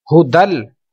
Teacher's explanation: تو اس میں غنہ ہم نہیں کریں گے کیونکہ تنوین کے بعد لام موجود ہے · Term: ادغام